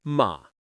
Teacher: just low and flat, no rise. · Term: third tone